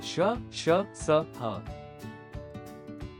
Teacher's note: 3, ऊष्म व्यंजन, इन्हें बोलते समय वायु मुख से घर्षण करती हुई निकलती है, फलस्वरूप सीटी जैसी आवाज आती है। ये भी संख्या में 4 है: श, श, स, ह। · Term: उष्म व्यंजन